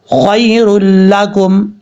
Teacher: یہاں پہ ادغام ہوگا لیکن غنہ نہیں کریں گے. خیر لکم, اس طریقے سے.